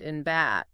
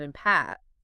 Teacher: You use your lips for both of them, right? But with B, you can kind of feel that little vibration in your throat. Exactly. And with P, there's no vibration. So that tiny little difference is what tells you it's a different letter, a different word.